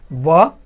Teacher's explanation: दांत और ओस्ट यानी दांत और होठों की सहायता से बोले जाने वाले अक्षर